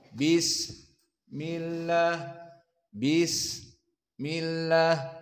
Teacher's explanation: bis dipanjangkan bis karena dia rakhawah